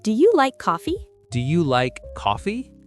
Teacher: Stress like and coffee.